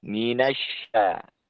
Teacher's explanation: ini menggunakan lidah bagian tengah dengan langit-langit yang lurus di atasnya. Minasya dengan diringi dengan angin yang sangat kuat. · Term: shin